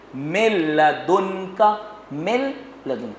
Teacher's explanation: ادغام بلا غنہ کی مثال ہے جس میں مکسنگ بھی ہوگی، مکس بھی کریں گے لیکن غنہ نہیں ہوگا. اس کی مثال دیکھیے، مل لدن کا، مل لدن، آپ نے مکس کیا لیکن غنہ نہیں کر سکتے.